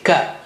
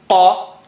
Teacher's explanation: Ka is not high sounding, it's normal sounding, Ka. Whereas Kha and Qa are both high sounding.